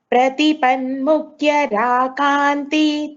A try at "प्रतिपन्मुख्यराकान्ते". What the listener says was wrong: There is no Kanti, Bhagini. Kanta.